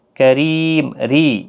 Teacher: یہاں پر را زیر کی وجہ سے باریک پڑھا جائے گا